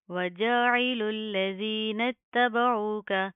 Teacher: لام اور تا کے اوپر کیا تشدید ہے، ان کو سختی سے مضبوطی سے جما کر پڑھیں گے. عین کی آواز کو آپ نے پراپر واضح کرنا ہے. · زال کے اوپر زبان باہر کی طرف آئے گی، نرمی سے ادا ہوگا.